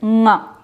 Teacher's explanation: For example, the nasal sound of ka is nga.